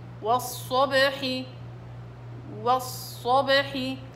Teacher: الصاد الأولى إلها زمن، زمن الرخاوة ما ضيعوش. والصو والصب، والصاد مطبقة بأضغط الصوت في الصاد.